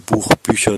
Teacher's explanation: die komplementäre distribuierung des ich und achlautes